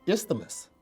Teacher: you added an extra vowel after the th